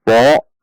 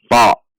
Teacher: ta tidak dengan membulatkan bibir, bukan to, namun ta. Ta dengan menaikkan pangkal lidah.